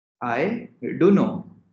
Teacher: T sound is completely dropped over here